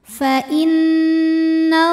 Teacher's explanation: Fa innallah, la mad tabi'i muqaddar karena ada baris fathah tegak di atas huruf lam. Cara bacanya panjang lamnya 2 harokat.